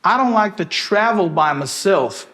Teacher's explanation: E esse my aqui, dá para reduzir? Lógico que dá, que é o schwa aqui